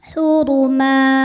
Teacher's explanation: Mad iwad karena ada baris tanwin fathah diwaqofkan cara bacanya dipanjangkan dua harakat tanpa n